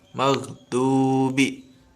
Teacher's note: Nah, di sini madnya itu mad tabi'i. Panjang bacaannya cukup 1 alif atau dua harokat atau 2 ketukan.